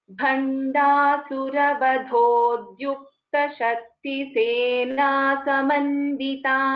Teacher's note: see this first letter Bha is a Mahaprana. The Da is a Alpaprana.